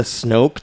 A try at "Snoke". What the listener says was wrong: Snoke, not Snope. Snoke. You said it's Snoke, but you said Snope.